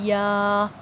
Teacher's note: یا کا مخرج ہے زبان کا درمیان تالو کے درمیان سے لگے